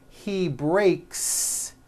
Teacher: the S you add also remains unvoiced